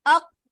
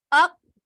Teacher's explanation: کا مطلب یہ ہے کہ آواز چلے گی نہیں. جیسے ہم مخرج پہ جائیں گے آواز بند ہو جائے گی، کیونکہ اس کے اندر شدت ہے. جتنے بھی شدت کے لیٹرز ہوتے ہیں ان میں کیا چیز ہوتی ہے کہ ہم جیسے ہی مخرج پہ جاتے ہیں ہماری آواز بند ہو جاتی ہے.